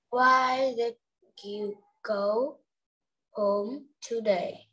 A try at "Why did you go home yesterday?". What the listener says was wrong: Yesterday. Okay, read. It says yesterday, doesn't say today.